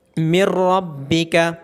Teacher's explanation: را میں نون ساکن کی آواز مرج ہو گئی ہے، اور یاد رہے را اور لام ہونے کی صورت میں ادغام غنے کے بغیر ہوتا ہے۔